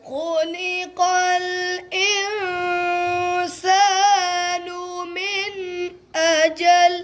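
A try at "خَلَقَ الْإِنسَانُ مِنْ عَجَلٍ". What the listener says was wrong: اچھا بچوں اجل یہ حمزہ کی آواز نہ بنے کیونکہ اجل کا حمزہ کے ساتھ ہو تو اس کا معنی ہوتا ہے مقرر وقت.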